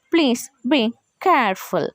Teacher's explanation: ఇక్కడ మనము ప్లీజ్ బీ అన్న దగ్గర falling, అగైన్ కేర్ఫుల్ దగ్గర పైకి వస్తుంది అనమాట మన టోన్ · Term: falling rising tone